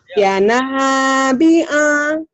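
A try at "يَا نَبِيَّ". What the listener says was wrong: Ya panjang.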